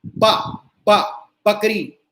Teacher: जैसे पेट फटा होता है जिसका, उसको हम बा, बकरी, उसमें होठ ऐसे होते हैं, ध्यान से देखना, अंदर की ओर होठ खिंचते हैं और दोनों मिल जाते हैं, बा, ठीक। लेकिन जो वोट है, वट है, वकील है, इसमें होठ बाहर को निकलते हैं, जैसा तुम लोग पाउट बनाते हो सेल्फी लेते हुए, उस तरह के होठ बाहर को निकलते हैं और थोड़ा सा बीच में खुले रहेंगे।